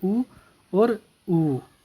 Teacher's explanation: ओष्ठ स्वर होते हैं हमारे उ और उ